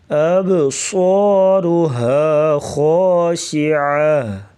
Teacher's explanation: عین کی واس گلے سے نکالیں گے, عین حلق کے درمیان سے